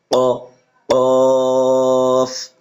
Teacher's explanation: ঠোঁট জায়গায় থাকবে, ঠোঁট গোল হবে না।